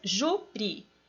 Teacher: Se eu dividir as sílabas, júri, eu tenho duas e a mais forte é o ju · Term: paroxítona